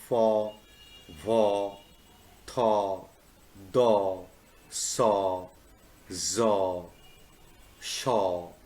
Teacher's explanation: involves almost blocking of the air stream and having the air pushed through the very narrow opening. As the air is pushed through, a type of friction is produced and the resulting sounds are called fricatives.